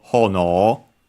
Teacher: accented on the first syllable, hono